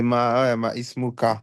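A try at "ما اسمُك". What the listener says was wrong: Normalement, tu vas dire masmuka. Et ism en arabe, il ne prend pas de ras el ayn. On ne met pas la petite ras el ayn. C'est hamzatul wasl. Il s'écrit sans.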